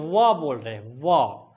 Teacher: अब देखेंगे व बोल रहे हैं व, तो व बोलने पर दांत जो है हमारा इस नीचे वाले होंठ पर सट रहा है। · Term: दंत और ओष्ठ